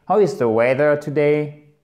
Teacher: vous avez tendance à faire une accentuation qui remonte sur la fin de la phrase alors que l'accentuation, elle descend bien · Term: Accentuation descendante